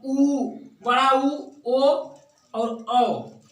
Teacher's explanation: पश्च यानी जीव के पीछे से यानी कंठ के सहारे बोला जाता है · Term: पश्च स्वर